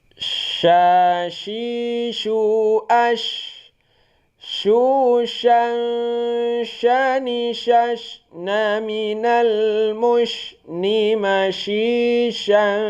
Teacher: Bunyi huruf sya dia itu di tengah lidah.